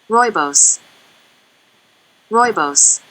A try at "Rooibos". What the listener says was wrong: Rooibos. Rooibos. You may have mispronounced oi. Oi, oi, oi. Rooibos. Rooibos.